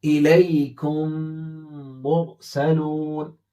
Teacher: میم ساکن کے بعد جب میم آتا ہے تو میم کو میم میں ملا دیتے ہیں